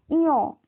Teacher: আবার ঞ, ইয় উচ্চারণ করতে গেলেও নাকের ব্যবহার হচ্ছে। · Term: নাসিক্য ধ্বনি